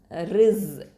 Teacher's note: அடுத்ததான் ரிஸ்கஹு, ரா கெஸ்ரா, ஜ சுகூன் ரிஸ், ரிஸ். இந்த ரா வந்து தர்க்கிக்காக தான் ஓதணும், அந்த ஜவுடைய கரெக்டான மஹ்ரஜில் வச்சு சொல்லணும்.